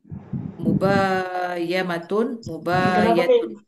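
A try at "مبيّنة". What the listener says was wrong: Kenapa mubayamatun? Kenapa pakai mim? Mubayi pakai ya.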